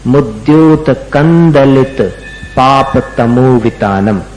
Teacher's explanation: दलित, दलित का द है, तो फिर वो बिंदी का जो उच्चारण है वो उसमें द में जाकर के मिल जाना चाहिए। म बोलोगे तो नहीं मिलेगा। मुद्योतकम दलित नहीं मिलेगा, म और द का मेल नहीं बनता, तो उसका उच्चारण करना पड़ेगा न के समान। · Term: अनुस्वार